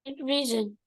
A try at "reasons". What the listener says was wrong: Reasons. No, reasons. You have to say your S. Reasons.